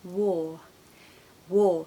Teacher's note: very often in the modern RP British accent we don't pronounce the r